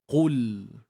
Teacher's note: untuk huruf qaf baris depan ni kita kena muncungkan bibir sebab baris depan dan pada masa yang sama kena tebalah okey angkat pangkal lidah dan temukan ke bahagian langit tu